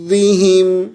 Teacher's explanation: ضاد کو فل موٹی آواز کے منہ بھر کے پڑھیں گے اور مد کریں گے. مد کو پورا کھینچنے کے بعد، جتنی ہم نے اس کو کھینچنا ہوتا ہے نا مد کو، 5 الفی مقدار، تو ہم اس کو کھینچنے کے بعد را کے ساتھ ملا دیں گے، ٹھیک ہے.